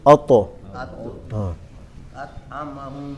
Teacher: تو کو موٹا پڑھیں اور قلقلہ کریں گے